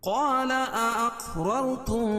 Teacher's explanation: قاف پر قلقلہ اور را کو پر پڑھیں گے. پہلی والی بھی را پر ہوگی اور دوسری والی بھی را پر ہوگی.